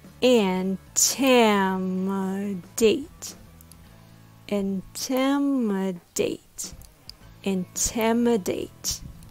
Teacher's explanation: With the stress on the second syllable, tim. The third syllable is a very weak syllable with a schwa sound. The last syllable is date, just like the date on a calendar.